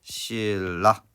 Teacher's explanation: 리을이 니은에게 영향을 줘서 니은을 리을로, 즉 비음이었던 니은이 유음으로 바뀌는 현상인 유음화